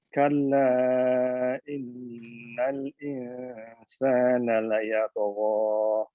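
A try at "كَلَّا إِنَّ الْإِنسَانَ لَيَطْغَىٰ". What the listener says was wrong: Ahsan, barakallahu fiik.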